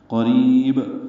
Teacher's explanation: قریب قوف پر پڑھیں گے، را باریک پڑھیں گے، را کو لمبا کریں گے، با ساکن پہ قلقلہ ہوگا